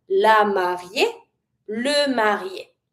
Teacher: when it's bride feminine or groom masculine, it's the same pronunciation because the E at the end of marié feminine is mute.